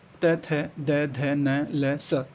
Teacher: दंत। दांत को इस्तेमाल करते हैं।